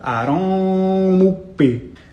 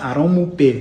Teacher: It's a double articulation. That means you're pronouncing a K sound and a P sound at the same time. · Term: labial-velar plosive